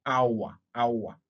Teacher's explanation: So triphthongs is now a combination of three vowel sounds. So it is a glide from one vowel sound to another, and then to the third vowel sound